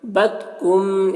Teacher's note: یہاں پر میم ساکن کے بعد میم ہے تو میم کو میم سے ملا کر پڑھیں گے غنہ کے ساتھ میں، اس کو ادغام شفوی کہتے ہیں۔